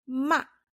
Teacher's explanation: case with ma it's ma ma like horse the fourth tone I always say it's like sharp and falling but really it's when your mom scolds you in a harsh